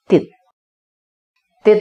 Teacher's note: perhatikan pemirsa kasrah dan tasjidnya dibaca menyatu kasrahnya sepertinya bergetatif sehingga bunyi konsonan t seperti dimajukan bunyinya dilekatkan ke kasrah sehingga bunyinya menjadi ini suku kata tertutup dibaca spontan satu ketukan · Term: tasydid